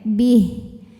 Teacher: Kalau berhenti haknya jadi sukun, baknya tetap pendek, bih. Jadi ini bacaan panjang di haknya hanya berlaku saat wasol atau kita meneruskan bacaan.